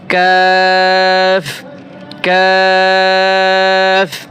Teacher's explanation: জিহ্বার গোড়া হতে একটু আগে বাড়িয়ে তার বরাবর উপরের তালুর সঙ্গে লাগিয়ে একটি হরফ উচ্চারিত হয়।